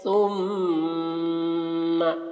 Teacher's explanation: ثم ثا ہے تو ثا کی آواز بہت ہی باریک ہوتی ہے، ہلکی ہوتی ہے۔ ثم اس طرح، میم مشدد ہے تو غنہ کریں گے میم میں